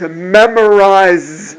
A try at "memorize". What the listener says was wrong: Again, z. No vocal cord. Z. Memorize. No vocal cord. The Z, no vocal cord.